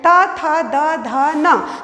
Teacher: इसका उच्चारण स्थान है दंत, मतलब जिह्वा जो है वो दंत को जाकर के स्पर्श करती है, तो इसीलिए इसे दंत वर्ण कहा जाता है